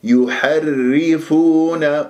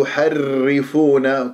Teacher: الراء مشددة بكسر راح تكون مرققة ، الراء الساكنة منها مرققة أيضا لأنها تتبع حكم الذي أدغمت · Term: مرققة صافية